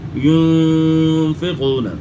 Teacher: نون ساکن کے بعد اخفا کے 15 حروف میں سے فا ہے تو غنہ اخفا کے ساتھ ہوگا